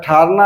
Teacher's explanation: ठना में ठ पर बलाघात है